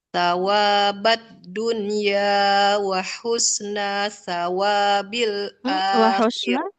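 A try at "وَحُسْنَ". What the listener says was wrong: Wa husna, nunnya nggak boleh dipanjangkan. Fa'atahumullahu sawabad dunya wa husna. Nah nggak panjang. Wa husna sawabil akhirah.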